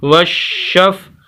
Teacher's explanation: واو زبر شین وش، شین زبر فا شف، وشف، سخت کر کے شین کو اور آواز کو تھوڑا سا روک کر